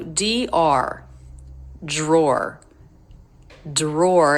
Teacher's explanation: it can be pronounced d Roar drawer but most Americans make it get a Jr sound drawer drawer so in IPA it would be written [Music] j